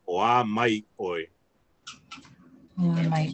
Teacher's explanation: It's kind of like the accent is put on the mai, so it's like you're saying oa mai oi.